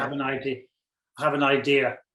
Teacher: when I say idea I don't say the R so you hear the a a lot more